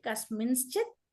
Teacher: ఆ నకారం కాస్త అనుస్వారము ప్లస్ శకారము రెండు వస్తాయి